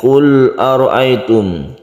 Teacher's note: ini adalah ro tafkhim atau tebal karena berfathah